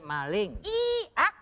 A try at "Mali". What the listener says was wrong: Bukan maling. Kagak pakai eng, pakai eh. Mali, Bang Mali.